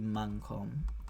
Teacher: So the dative for makom would be the M would turn to an N here, mankom, and it would be pronounced like a velar nasal